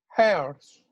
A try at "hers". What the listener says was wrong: Hers. So we want to hear the H.